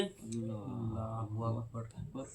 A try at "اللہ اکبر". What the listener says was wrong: نہیں, اللہ الگ کرو. ہاں ہو الگ کرو, اکبر الگ کرو. ہاں الگ الگ کرو گے تبھی صحیح ہوگا. اللہ اکبر.